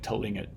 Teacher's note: put a schwa in between the T and the L